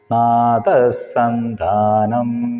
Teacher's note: വിസർഗം കഴിഞ്ഞിട്ട് സകാരം വരുന്നതുകൊണ്ട് അവിടെ സകാരത്തിന് ഊന്നൽ കൊടുക്കുക വിസർഗത്തിന്റെ ഉച്ചാരണം ഉണ്ടാവില്ല